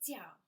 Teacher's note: that's fourth tone. Say it like a knife slicing through the air. You go jiao.